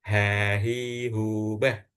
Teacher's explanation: pengucapan yang benar itu pengucapan yang tidak keluar angin atau udara yang dari hidung